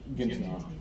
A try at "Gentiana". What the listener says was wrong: No, hard G. Gentiana.